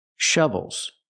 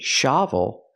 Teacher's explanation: I need the closed uhuh sound like cup and up it's more closed